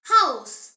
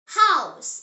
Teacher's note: H pronounced as ha. In German, ha is always breathed out. It is never silent like in some English words. The example word is house.